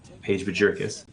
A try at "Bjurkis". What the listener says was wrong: Yeah, I think the J is silent in there.